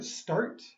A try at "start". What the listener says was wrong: Good, but you had no T sound, okay?